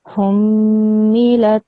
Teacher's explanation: because this meme has a shadda, tashdid on it, it has a shadda on top of it, I have to join it with the previous letter, which is a ha. So I have to join the ha and the meme together and create a ghunna sound